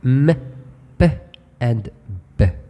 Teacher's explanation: sounds are basically bilabial sounds because they involve both lips